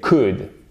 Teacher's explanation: On ne prononce pas le L, bien évidemment, vous le savez.